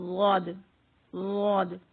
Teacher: یہ موٹا حرف ہے اور یہ زبان کی کروٹ سے ادا ہوتا ہے